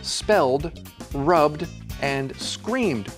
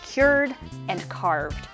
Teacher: If the verb ends in a vowel sound or LNRB, GMZS, or V, then ED is just said like a D sound. It doesn't become an extra syllable. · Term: no extra syllable